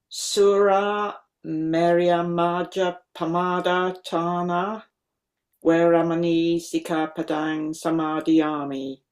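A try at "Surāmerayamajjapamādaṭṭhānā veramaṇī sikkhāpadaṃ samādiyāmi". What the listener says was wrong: Okay, I detected a slight pause, a slight lengthening of that syllable. Not lengthening of the vowel, because it's distinctly a short vowel, but lengthening as for a following double. On your doublings, there, Suramerya Majja Pamadatthana Sikkapadam. Those are unambiguously double verb.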